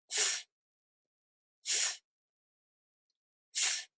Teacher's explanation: With this sound, you bring the tip of your tongue close to the gum ridge to make the narrow passage. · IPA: [s]